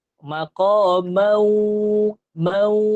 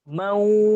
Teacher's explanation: sebut dengan mau tapi ada dengung dekat hidung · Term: idgham ma'al ghunnah